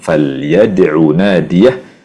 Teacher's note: jangan memanjangkan ain di akhir kata falyad'u